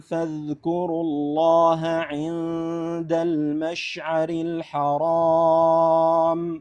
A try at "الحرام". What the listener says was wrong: بعد رقق الحاء الحرام.